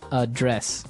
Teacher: So, the verb address has the the stress on the second syllable